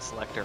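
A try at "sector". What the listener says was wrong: Now it sounds like selector. Like select. Yes, Selector.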